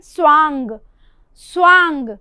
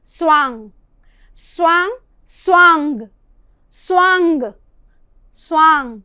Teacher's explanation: इसलिए उच्चारित करते हुए भी यदि अनुस्वार है तो उसका उच्चारण दूसरी तरह से होगा। उसके उच्चारण में पंचम वर्ण की ध्वनि आनी चाहिए, स्वांग स्वांग। और जो अनुनासिक है उसमें कोई अलग ध्वनि नहीं पता होगी, बस वो जो स्वर है वो नासिका से भी उच्चारित होना चाहिए, स्वांग स्वांग स्वांग स्वांग स्वांग।